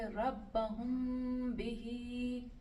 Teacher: ہم نے اس کو اخفاء کر دیا میم کو، اور تھوڑا سا تشدید کا لک وہ دیتا ہے، اور پھر یہاں پر غنہ بھی ہو رہا ہے. تو یہاں پر پھر آپ کو پڑھنا ہے ربہم بہی.